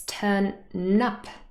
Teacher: what happens is that the last sound in turn the um the nasal it combines with the next word so really instead of just saying turn up it's turn nup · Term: linking